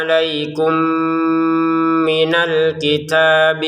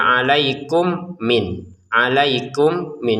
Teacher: Sekarang masukin mim pertama kepada mim yang kedua, maka akan ada namanya dengungan. Itulah kenapa di atasnya mim kedua ada tasdidnya.